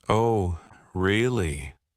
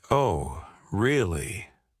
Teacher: with a high surprised tone, they're genuinely interested or shocked